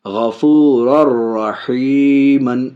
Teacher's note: غفور الرحیم، ناک میں آواز نہیں جائے گی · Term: ادغام